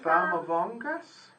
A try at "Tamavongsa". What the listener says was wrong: It's a T. Tamavongsa.